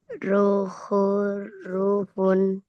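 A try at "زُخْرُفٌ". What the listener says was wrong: Ada titiknya. Huruf pertama ada titiknya. Ya, huruf kedua, huruf kho, harokatnya apa?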